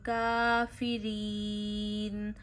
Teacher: اچھا یہاں یا ساکن سے پیچھے زیر ہے، یا مدہ ہے، اور را کو بھی باریک پڑھنا ہے کیونکہ را کے نیچے زیر ہو تو را کو باریک پڑھتے ہیں